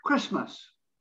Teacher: the tea is almost non-existent again christmas that's how it's pronounced